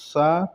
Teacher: इनके उच्चारण में वायु मुख से घर्षण के साथ साथ निकलती है